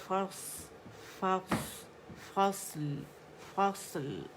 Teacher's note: طباق والا لیٹر ہے، اس میں سیٹی بھی ہے، رخاوہ بھی ہے · لام پہ جائیں گے، اس کا توسط شو کریں گے، اس کی باریکی شو کریں گے